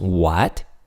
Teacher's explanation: For a second tone, you can think of the word what, like asking a question, what? If you say what, your tone naturally rises, right? So what will approximate the ah sound in Chinese.